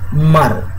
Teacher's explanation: মা উচ্চারণ করতে গিয়ে দুটা ঠোঁটে ঠোঁট লেগে যাচ্ছে, অর্থাৎ বাতাসটা বের হওয়ার সময় বাধা প্রাপ্ত হচ্ছে